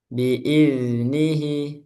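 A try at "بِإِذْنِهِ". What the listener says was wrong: Nah, masih kepantul. Iz, jangan dilepas. Iz, iz ngalir. Suaranya mengalir. Rokhawah. Iz. Biiznihi. Biiz. Dipanjangin dulu. Nah, itu ditahan, dipertahankan. Biiznihi.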